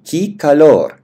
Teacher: в данном случае э у нас в безударной позиции, поэтому произносим ки